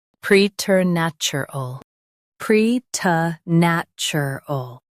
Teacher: Pre, nat, chur, ul, preternatural, pre, t, nat, chur, ul, preternatural. Stress nat and keep ter soft.